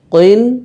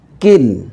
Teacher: কফ দুই জের কইন, মোটা করে উচ্চারণ করতে হবে। কাফ দুই জের কিন, পাতলা করে উচ্চারণ করতে হবে।